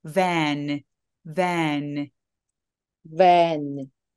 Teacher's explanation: V가 F하고 발음이 똑같아요. 근데 성대의 울림만 추가됐습니다.